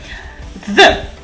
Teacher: It's a consonant. It's a fricative. It's a dental one.